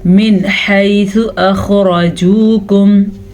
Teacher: نون ساکن کے بعد حروف ہلکی میں سے ہا آیا ہوا ہے، اسی لیے ہم نون ساکن کو ظاہر کر کے پڑھیں گے اور بغیر رکے پڑھیں گے، یعنی کہ یہاں پہ غنہ نہیں کرنا ہم نے